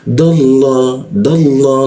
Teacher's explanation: Lam bertasjidnya itu dibaca ke arah O dia dallah dallah seperti itu.